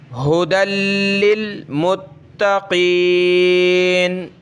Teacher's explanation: ٹھیک ہے، یہ ہا کون سی چشمے والی ہا منہ سے نکالیں گے صرف، اور دوسری ہوتی ہے ہا گلے سے نکالنے والی، اس کو ہم نے صرف منہ سے ہوا نکالنی ہے. ھدی، لام پہ یہ تشدید ہے تو لام کو ہم نے سخت کرنا ہے. ھدی، یا کو نہیں پڑھیں گے. · دال کو ڈائریکٹ پلس کریں گے لام کے ساتھ، اور لام کو ہم نے جمانا ہے تشدید کی وجہ سے. ھدی للمتقین، تا کے اوپر تشدید ہے، تا کو بھی سخت کریں گے.